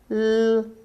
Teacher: The tongue tip makes a light contact with the upper alveolar ridge. The airstream is released from the sides of the tongue.